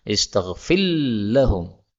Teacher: Yang pertama, ra ketemu dengan lam, istaghfir lahum, ini boleh idgham